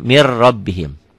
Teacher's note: Tulisannya min rabbihim, ada n-nya. Bacaannya mir rabbihim. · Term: idgham bila gunnah